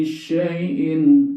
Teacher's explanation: Kok N-nya jelas? Itu namanya dibaca izhar. Apa izhar? Artinya jelas. Apa yang jelas adalah bunyi tanwinnya.